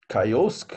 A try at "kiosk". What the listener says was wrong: Kiosk. No. Listen. Kiosk. The first syllable is stressed. Kiosk.